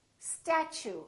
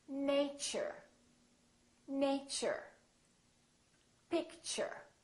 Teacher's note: the T becomes kind of a CH sound